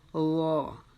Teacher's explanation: یہ چونکہ حروف مستعلیہ میں سے ہے تو ہم اس کو پر کر کے پڑھیں گے اور ہماری زبان کا جو پچھلا حصہ ہے وہ اوپر کی طرف تھوڑا اٹھے گا